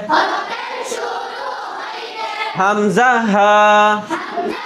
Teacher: হ্যাঁ, 1 নম্বর মাখরাজ হলকের শুরু হইতে হামজা হা